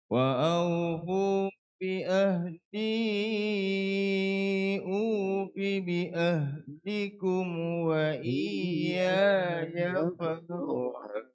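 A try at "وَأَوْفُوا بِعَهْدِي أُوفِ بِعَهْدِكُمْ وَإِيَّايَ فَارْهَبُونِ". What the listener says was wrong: Lagunya betul. Lagu Sid Jiharkah namanya. Tapi dia sumbang. Bukan sumbang banyak. Sumbang sikit lah. Ini taranum Jiharkah lah.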